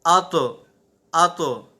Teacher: تو حروف مستعلیہ میں سے ہے، اسے ہم پر بھی پڑھیں گے اور ساتھ آواز بھی اس کی لوٹے گی